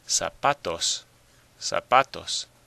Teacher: you probably hear that the stress is on the pa.